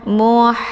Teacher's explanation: kalau Hamas itu ada desis angin yang agak samar-samar maka saat melakukan huruf H ini yaitu dialirkan dengan desis angin